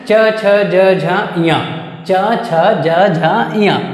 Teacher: च आपका जीभ कहाँ टच हो रहा है, दांत के जस्ट ऊपर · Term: तालव्य